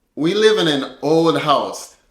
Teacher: we're connecting the consonant from an to the beginning vowel o to make an old sound almost like one word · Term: linking